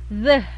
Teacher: Kemudian ini gabungan selanjutnya adalah bacaan dari gabungan T dan H, tapi dia lebih kuat seperti D, hanya saja dia ada air, ada udara yang keluar dari mulut ketika bilang the.